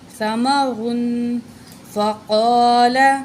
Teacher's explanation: قاف کو موٹا کر کے پڑھیں گے